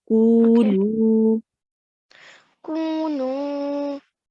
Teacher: So the ku needs to be as long as the nu. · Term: prolongation